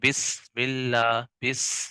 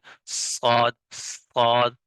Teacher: ان حروف کو ادا کرتے وقت سیٹی کی آواز نکل رہی ہے